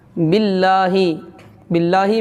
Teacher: باللہ، باللہ میں اللہ کا جو لام ہے نا، لا، باللہ، اس کو باریک پڑھیں گے، باریک، کیونکہ اللہ کے لام سے پہلے اگر زیر ہے، زیر یہاں پہ بی ہے نا، با کے نیچے زیر ہے، تو اس کو اللہ کے لام کو باریک پڑھیں گے